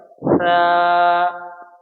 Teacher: ज़बान की नोक और सनाया उलिया का किनारा, यानी ज़बान की नोक रहेगी और ऊपर के दांतों का किनारा हिस्सा, दो दांत जो सनाया उलिया कहते हैं, उसका किनारा हिस्सा, वहाँ से सा, वहाँ से बोलेंगे हम, क्या बोलेंगे?